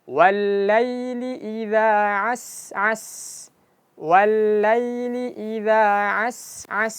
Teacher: Dan sin pertama dengan sin kedua panjangnya sama